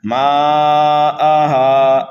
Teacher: الف مدہ کے بعد حمزہ اسی کلمے میں آنے کی وجہ سے یہاں پر مد متصل ہو رہا ہے، ہا کو ایک الف کے برابر کھینچنا ہے۔